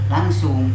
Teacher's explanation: Tetap dua-duanya harus tidak ada suara nun, tidak boleh ada. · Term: idgham